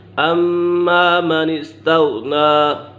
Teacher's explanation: غین ساکن ہے اور یہ غین حرف مستعلیہ میں سے بھی ہے، اسے پور پڑھا جائے گا